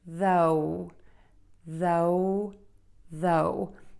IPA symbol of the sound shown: ðoʊ